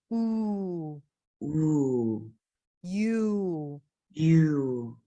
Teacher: The American oo is all the way in the back. The tongue is not moving forward. It's pulling back.